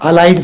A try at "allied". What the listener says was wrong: She's confused with elite. E-L-I-T-E.